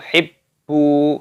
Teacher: Tasdid pada baknya dimasukkan, ditekan